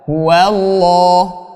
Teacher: lafazul jalalah huwallah harus tebal, ya. Harus dibaca dengan bacaan yang tebal.